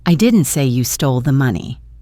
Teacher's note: Now let's move the stress to the word say.